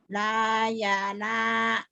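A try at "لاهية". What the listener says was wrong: Yi. Bukan ya. Layina. Layina.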